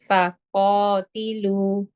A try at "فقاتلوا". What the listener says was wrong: Yes, this is better. Jazakumullah khairan. This is much better.